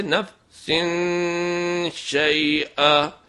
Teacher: آواز نون کی ہی نکالنی ہے لیکن ناک سے ادا کرنا ہے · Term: غنہ